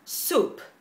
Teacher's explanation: Vamos a ver, la primera es soup, sopa en español, que se escribe S-O-U-P, soup, y se pronuncia con U española, pero un poquito más larga